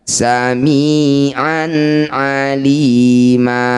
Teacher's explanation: Mad iwad panjangnya sama dengan mad thobi'i yaitu dua harakat saja jangan terlalu panjang. · Fathah tanwin dihentikan disebut bacaan namanya mad iwad. Cara bacanya bunyi fathah tanwin kita ganti jadi fathah panjang. Samian aliman saat dihentikan samian alima.